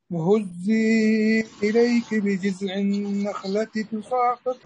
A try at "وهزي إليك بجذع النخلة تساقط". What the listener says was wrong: ذال ذال ذال نريد أن نظهر الذال بجز. وهزي